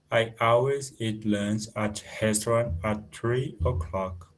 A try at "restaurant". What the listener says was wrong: Okay, be careful of your R. Restaurant.